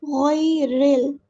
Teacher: غیرل، غی نہیں پڑھنا، غی غیرل. را کو ہم لام سے ملا دیں گے، حمزۃ الوصل ہمارا ڈراپ ہو جائے گا، گر جائے گا.